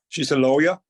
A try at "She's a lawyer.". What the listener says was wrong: You're using rising tone here. She's a lawyer. So you can see here, let's see the rising tone. It shows that your sentence isn't finished.